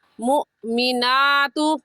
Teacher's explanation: مؤمناتو میں حمزہ ساکن ہے اور حمزہ ساکن پر ہمیشہ جھٹکا دے کر پڑھتے ہیں، تو ہم جھٹکا دیں گے.